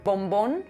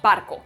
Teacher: nada antes de esa B barco se llama oclusiva bilabial Sonora cerramos totalmente la boca al pronunciarla por eso es oclusivo